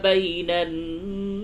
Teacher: نون مشدد ہے اس جگہ پہ غنہ ہوگا